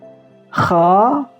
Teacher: Maksudnya segi pangkal lidah ini suaranya naik ke langit-langit. Kha itu langit-langit agak ke belakang. Kha jadi tidak terlalu ke belakang. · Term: isti'ala